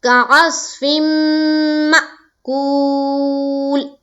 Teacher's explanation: واو مدہ کو پورا صاف طور سے پڑھنا ہے اور بالکل کھینچ کر پڑھنا ہے. ایک الف کے بقدر جس طرح بتایا گیا واو مدہ کو کھینچنا اسی طرح کھینچنا ہے.